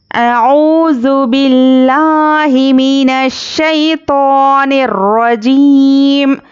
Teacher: یہاں پر دیکھیے لفظ اللہ سے پہلے یہاں پر با پر زیر ہے، اس لیے ہم یہاں پر لفظ اللہ کو باریک پڑھیں گے